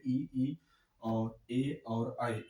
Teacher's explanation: जिस स्वर वर्ण का उच्चारण करते हैं तो हमारे जिह्वा के अगले भाग से उच्चारण होता है, उसको हम अग्र स्वर कहते हैं, जिसमें ई और ए और आई, ये चार स्वर जो अग्र स्वर के अंतर्गत आते हैं।